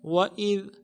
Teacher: وَإِذْ میں واو کو نرم سے ادا کریں گے، حمزہ کو ذال کے ساتھ ملانا ہے، ذال باریک حرف ہے، باریک ادا ہوگا